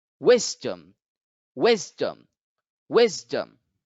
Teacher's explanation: Here you can see that the apostrophe is over the first syllable. So wis gets to be accented while dum is not accented.